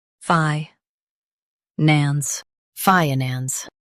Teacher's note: Emphasize FYE and keep nans light.